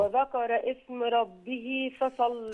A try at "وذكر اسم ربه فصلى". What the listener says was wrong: خلي بالك الهمزة همزة وصل. وذكر اسم ربه.